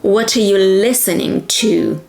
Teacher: The verb is the key word, is the one that carries the meaning, so it has to be stressed, emphasized.